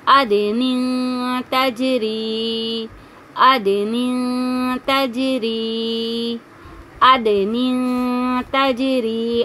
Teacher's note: اب یہ جو دال ہے نا یہ ساکین ہے، دال ساکین ہے، اسی لیے ہم اس کو پلٹ رہے ہیں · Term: قلقلہ